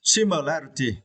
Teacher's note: you need to stress the third syllable